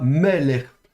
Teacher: ça veut bien dire que l'accent tonique est sur la première syllabe, donc on prononcera meller.